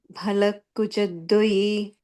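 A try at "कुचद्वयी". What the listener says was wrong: Dvayi. Again, like we said, it's not dwa, it's dva, dvayi.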